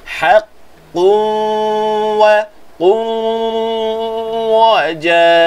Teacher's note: Wa, qu satu harakat terus berpindah kepada huruf waw, panjangkan dengung kat situ. Dan pastikan suara keluar daripada mulut, suara keluar daripada hidung. Kedua-duanya sama banyak. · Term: idgham ma'al ghunnah